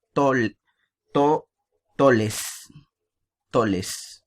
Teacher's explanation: en Puerto Rico, ¿no? Tienden a sustituir, por ejemplo, la R por la L